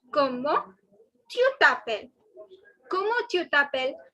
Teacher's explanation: The last S is not to be pronounced. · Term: last S is silent